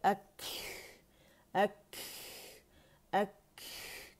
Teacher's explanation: قلقلہ نہیں کریں گے، ہمس واضح کریں گے. ایئر فلو جو ہے وہ آپ کو فیل ہوگا باہر نکلتا ہوا ہاتھ کے اوپر.